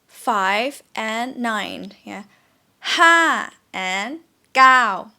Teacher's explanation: The numbers that have a falling tone are 5 and 9.